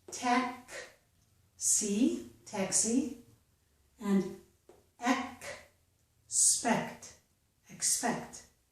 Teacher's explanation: In the words taxi and expect, we can hear the two sounds K, S.